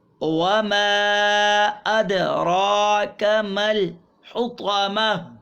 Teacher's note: وما میں بھی مد منفصل ہے کہ حمزہ فوراً دوسرے کلمے میں تشریف لا رہی ہے